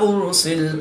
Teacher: را ساکن سے پہلے حمزہ پر پیش ہے تو را کو پور یعنی موٹا پڑھیں گے